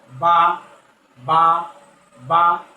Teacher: 16 নম্বর মাখরাজ দুই ঠোঁটের ভিজা জায়গা হচ্ছে